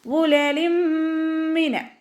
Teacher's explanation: തെൻവീനിന് ശേഷം ഇദാം ബിഉന്നയുടെ അക്ഷരമായിട്ടുള്ള മീമ് വന്നു. തെൻവീനിലുള്ള നൂനിനെ മീമിലേക്ക് ലയിപ്പിച്ച് ഉന്നയോടുകൂടി ഓതാൻ ശ്രദ്ധിക്കുക